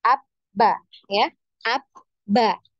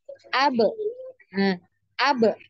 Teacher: Abba ini ada pertemuan ya, ada pertemuan di antara kedua bibir ya, bibir atas dan bibir bawah. Ya, ini bertemu ya, bertemu secara rapat ya. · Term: huruf ba